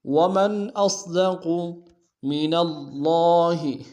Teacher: من اللہ میں نون کو لفظ اللہ کے لام کے سامنے آنا ہے، شد ہے زور دیں گے، کھڑا زبر ایک اسم دار میں کھینچیں گے۔